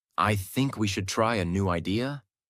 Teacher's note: One of the biggest mistakes learners make is something called rising intonation. This means your voice goes up at the end of the sentence as if you're asking a question even when you're not